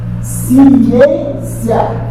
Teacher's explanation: Esse I é fraco, o A é forte. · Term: tom crescente